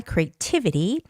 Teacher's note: Creativity, the stress is on I, the first I, creativity.